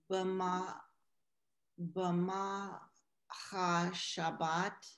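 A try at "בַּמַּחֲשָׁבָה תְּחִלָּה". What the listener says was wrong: Hashabbat, not Shabbat. Bama Ha Shabbat. So ma'ase b'machashava, always break it up into syllables if it's a big word or an unknown word.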